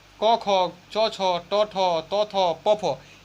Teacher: सारे वर्गों के पहला दूसरा, इसे पढ़ के देखिए, कंपन कोई नहीं होगा। क ख च छ ट ठ त थ प फ, ये थोड़ा सा कंपन नहीं होगा। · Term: अघोष